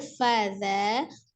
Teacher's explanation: fa-nya tidak diayun, za-nya yang panjang